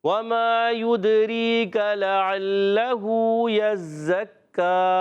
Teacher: لَعَلَّهُ يَزَّكَّى، یزکا، یہ آواز ہے کسی کی غلط، یزکا نہیں، کا عین کی طرف نہیں جانا، یزکا، کاف رکھنا ہے آخر میں، عین کی آواز نہیں آنی چاہیے